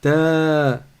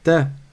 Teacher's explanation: On voit la différence entre la première syllabe et la dernière. La première, c'est un ta suivi d'un med, c'est-à-dire d'une prolongation. Et la dernière, c'est un ta, mais qui n'est pas suivi d'une prolongation.